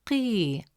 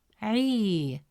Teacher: Since the long vowel ya comes immediately after قي, it stretches the short E sound into a long E sound. Instead of pronouncing it as قي, the presence of ya makes it قي.